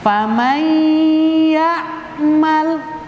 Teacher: nunnya itu seakan-akan masuk kepada huruf setelahnya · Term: idgham